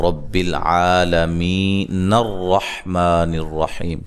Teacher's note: یہ حمزہ جو ہے وصلی ہے، یہ جب ملائیں گے تو یہ حمزہ گر جائے گا